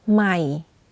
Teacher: you can hear that my voice goes in a lower pitch when pronouncing the word · for low tone you add a slight falling low pitch